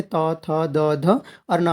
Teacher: यानी जीभ जो है दांतों को टच करती है, जैसे त, थ, द, ध और ना।